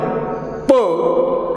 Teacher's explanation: the phoneme is pronounced with the help of two lips